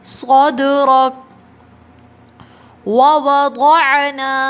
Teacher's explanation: صاد heavy letter ہے، صد کی آواز نہیں آئے